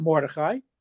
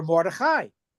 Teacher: Emphasis on the last syllable which is grammatically correct Hebrew.